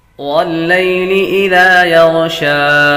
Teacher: غین حروف مستعلیہ میں سے ہے، اس لیے اس کو پر پڑھیں گے